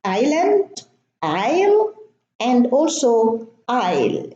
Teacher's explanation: we have a silent S. And the S, the silent S, is preceded by the vowel I, and it's pronounced as an I.